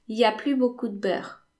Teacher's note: Il y a, instead of il y a, the n of the negation is gone